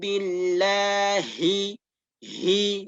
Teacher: Nah, pangkal bersamaan dengan hamzah tadi, ya. Dan dia ketika kita mengucapkan huruf ha ini harus diiringi dengan keluarnya angin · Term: huruf hamas